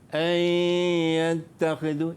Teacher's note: Idgham ni dia masukkan huruf yang pertama tu ke dalam huruf yang kedua. Jadi nun tak bunyi lagi lah. Jadi kadang-kadang silapnya kita baca an yattakhidhu. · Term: idgham ma'al gunnah